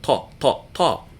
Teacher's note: makes the ta sound, the unaspirated T, not t, but ta, ta, ta.